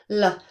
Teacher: And what lateral means is that the air is escaping around the sides of our tongue not over the top but at the sides. So if we imagine this L sound, which is our only English lateral approximate L, what we're doing, we're putting our tongue up in the same position as the R sound. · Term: lateral approximates, lateral approximants